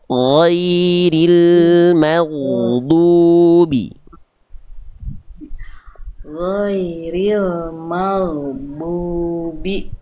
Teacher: Ghain ketika sukun dan didahului fathah, dia tetap dibaca tebal. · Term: ghain sukun